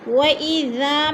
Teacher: وَإِذَا میں الف مدہ، الف خالی سے پہلے ذال کے اوپر زبر ہے تو الف مدہ کو ایک الف 2 حرکات کے برابر لمبا کر کے پڑھنا ہے